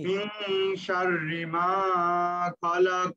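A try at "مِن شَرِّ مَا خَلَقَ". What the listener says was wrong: মাতে টান বেশি হয়ে গেছে, একালিপ টান, শুধু আওয়াজে একটা ধাক্কা দেন। মা খালাক।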